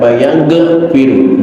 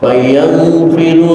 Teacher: Bersihkan dari pantulan qalqalah karena ghin bukan huruf qalqalah